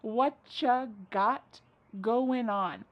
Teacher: Whatcha is what plus you. You becomes cha.